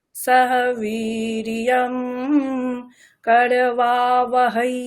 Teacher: করবা আকারটা আরো টানতে হবে